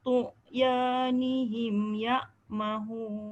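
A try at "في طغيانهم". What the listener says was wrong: Baik-baik takut jadi ain. Bukan fi tu'. Fi tu'. Fi tu'. Dia jangan ada qalqalah. Tu' ya.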